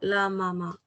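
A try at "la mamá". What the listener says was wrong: La Mama. A has an accent.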